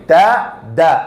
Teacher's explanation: ദാന്റെ മഖ്റജ് ദ അല്ല, നാവ് പുറത്തേക്ക് വരാൻ പാടില്ല. നാവിന്റെ അഗ്രം മുകളിലത്തെ മുമ്പല്ലിന്റെ ഊനിൽ ത ദ, അതേ സ്ഥലം